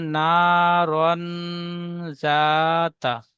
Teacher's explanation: তানবিনের আওয়াজকে নাকে তুলে এক আলিফ পরিমাণ গুণনা করে পড়তে হবে, একে ইকফা বলে